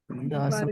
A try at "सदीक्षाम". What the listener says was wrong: This letter दास नहीं स हाँ सदी। दास बरगे स हाँ स सदीक्षाम।